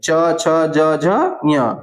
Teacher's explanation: ये सब तालु से बोले जाते हैं। ये तालव्य वर्ण है।